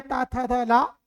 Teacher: दांतों को मिलाकर बोले जाने वाले वर्ण दंत व्यंजन